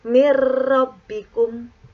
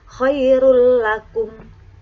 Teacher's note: dengan memasukkan nun atau tanwin ke dalam huruf lam dan ro tanpa dengung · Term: idgham bila gunnah